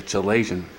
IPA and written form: kəˈleɪziən (chalazion)